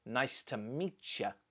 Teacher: So this is blending. The last sound in meet, t, and the first sound in you, y, come together and they almost crash into each other and create a new messy sound. In this case, it's ch. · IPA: /miʧə/